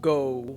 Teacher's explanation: our o sound is not a pure o rather it drifts towards ooh near the end if you say a word like go really slowly you should